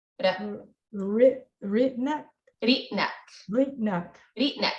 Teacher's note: some speakers did trill it 2 or 3 times, but a lot of times it's just a quick tap, like a very, you just think of it like a very, very short D sound.